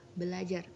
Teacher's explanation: Namun karena ada dua bunyi R, maka R yang pertama diperbedakan atau disimilasikan menjadi L, sehingga menjadi kata belajar